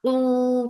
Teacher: for dhamma circle lips and make it 2 counts long.